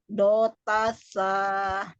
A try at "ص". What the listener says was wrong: The. The. Ujung lidahnya keluarkan. The. Bukan sa, tapi the.